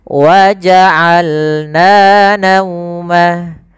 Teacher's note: Dari tengah tenggorokan kita lafalkan ain.